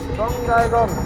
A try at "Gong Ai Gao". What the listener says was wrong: Gong ai gong no. Not a gong ai gong. Gong ai gao. Not a gong ai gong. Gong ai gao.